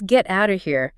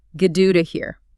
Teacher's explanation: So the phrase get out of here features a T in get, followed by an O in out. The T in out is followed by the O in of. They both become flaps. It sounds like Gaduda here.